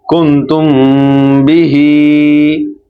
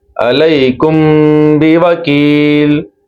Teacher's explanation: जब मीम साकिन के बाद हर्फ बा आ जाए तो मीम साकिन में इख्फाए शफवी होगा, यानी यहाँ भी हम गुना करेंगे